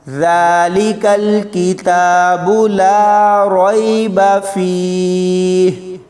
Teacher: ذال کو دھیان سے پڑھنا ہے، اس کی جگہ زا نہیں پڑھنا